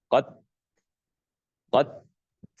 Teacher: Q Ya, di sini ada hembusan nafas. Jadi dia yang pertama ada syiddahnya, tertahannya suara. Kemudian yang kedua hembusan nafas